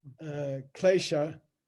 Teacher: klesha is not retroflex